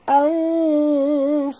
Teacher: Nun mati bertemu fa, kita kena sorokkan bunyi nun ke dalam fa disertai dengung dua harakat. Ikhfa hakiki.